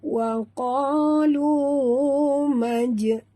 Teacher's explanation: Ya, di sini jim yang mati, kita tahu jim bersifat qalqalah. Jadi bila dia mati di tengah kalimah, kita kena lantunkan dengan lantunan lunak